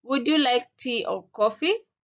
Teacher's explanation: Here, I use the rise fall intonation. So my intonation first rises and then falls.